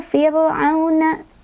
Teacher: Fir meringis, ra-nya tipis ya